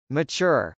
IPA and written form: mətʃˈʊr (mature)